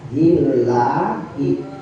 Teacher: Kalau ada lafaz Allah sebelumnya adalah harokatnya kasroh, maka lam jalalahnya dibaca tipis